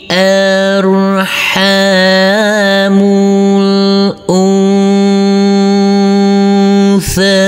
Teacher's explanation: Huruf nun yang bertemu dengan huruf tha ini adalah bacaan ikhfa, huruf nun yang bersukun ini, maka huruf nunnya harus kita samar-samarkan.